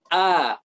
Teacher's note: Huruf halq itu adalah yang pertama hamzah. Bisa kita rasakan dari pangkal, dari paling bawah tenggorokan. A, kemudian ha.